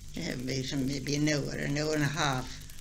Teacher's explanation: Northern English and Scots lost this L between an A and a consonant